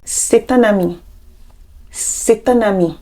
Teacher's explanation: Here, there are 2 liaisons. Liaison in T between et and un. Liaison in N between un and ami.